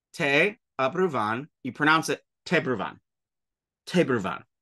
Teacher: The A stays the same, but the short a fucks right off. It just is gone. So you don't even pronounce it.